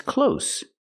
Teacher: this word close has the S sound no vibration